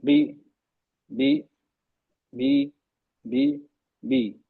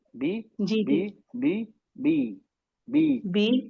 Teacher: हम जब पढ़ते हैं जुबान को नहीं उठाएंगे तो वो ए और इ की इन बिटवीन ए एंड ई आ और इ के बीच में हो जाती है